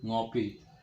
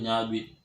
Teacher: simulfiks dimanifestasikan dengan nasalisasi dari fonem pertama suatu bentuk dasar